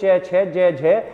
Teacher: च वर्ग के जितने भी वर्ण होंगे उनका जो उच्चारण स्थान होता है वो तालव्य होता है